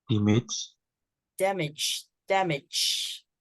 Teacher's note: So we stress the mage part, damage. Again, use the schwa sound for the first part.